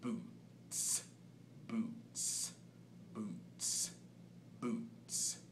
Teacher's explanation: contains largely the kick drum sound in the B part and you're getting sort of a syncopated snare sound in there that is using the tongue right behind the front teeth